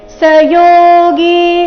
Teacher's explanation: ಯೋಗಿ ಎರಡು ಸಹ ದೀರ್ಘ ಇದೆ ಯೋ ಮತ್ತು ಗಿ